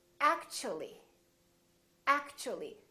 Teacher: the T becomes kind of a CH sound so we say actually actually so the T and U create